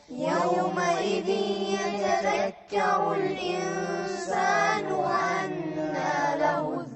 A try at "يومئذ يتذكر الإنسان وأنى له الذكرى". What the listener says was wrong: وين الغنة؟ يومئذ يتذكر الإنسان وأنى له الذكرى. يومئذ يتذكر الإنسان. وأنى له الذكرى.